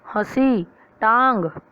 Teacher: इसका उच्चारण करते समय हवा नाक और मुख दोनों से निकलती है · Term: अनुनासिक